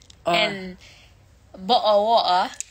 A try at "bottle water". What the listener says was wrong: Yeah, we don't pronounce the T's in that. We say bottle water.